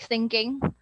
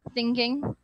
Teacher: they would usually try to slide the sound of th into s so it sounds like sinking thinking so it is very important